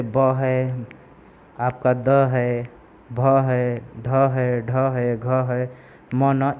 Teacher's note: Vocal fold के कंपन के माध्यम से जो है ये वाइब्रेशन के माध्यम से जो है साउंड प्रोड्यूस होता है। जैसे ब है, आपका द है, भ है, ध है, ढ है, घ है, म न, इस प्रकार के जो साउंड है ये वॉइस्ड है।